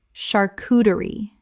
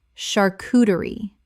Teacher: The CH makes a SH sound in this French word.